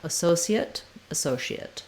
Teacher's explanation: and again you can use the s or the sh pronunciation second syllable stress first letter a says uh · It doesn't matter so much what vowel I have. I just want to have a reduced vowel rather than that clear A diphthong that I have in associate.